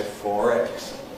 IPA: ˈfɔːr ˈegz